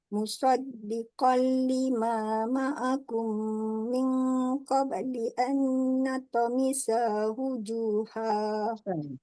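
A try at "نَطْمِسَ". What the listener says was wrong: Satu harakat. Nalqa. Angkat pangkal lidah. Dekat huruf tu angkat pangkal lidah. Jangan kau kalau natamisa. Tak cantik. Nalqa. Nalqamisa wujuha. Pendek. Sa pendek. Sa satu harakat.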